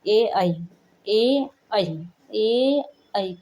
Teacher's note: ए कंठ और तालू दोनों से हो रहे